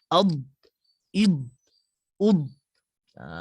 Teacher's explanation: Huruf dad satu-satunya huruf adalah yang menggunakan tepi lidah kita. Tepi lidah kita merapati gigi geraham kanan ataupun kiri, bergantung pada pemilihan lidah kita lah.